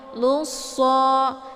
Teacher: ditekan suaranya kemudian dileburkan ke dalam huruf so ya Luso jadi cara baca lussa ini ditebalkan huruf shad-nya ya karena posisi Shade itu yaitu ujung lidah dengan ee sejajar